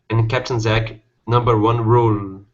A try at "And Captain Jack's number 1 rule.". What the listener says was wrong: Okay, add the S on Jack's. And Captain Jack's number 1 rule.